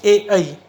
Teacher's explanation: इनका उच्चारण करते समय कंठ, तालु और जीभ का संबंध आता है, इसलिए कंठ तालव्य श्रेणी में आते हैं।